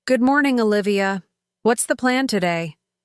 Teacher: What's the plan today?" I made sure my R in morning sounded strong and my T in what's was soft like the American flap.